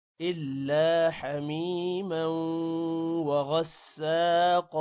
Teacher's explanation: حمیما میم کے بعد یا ہے لمبا کریں گے، موں پر غنہ ہوگا